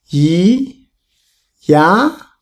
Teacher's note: the second tone, go up. Yi, ya, like English.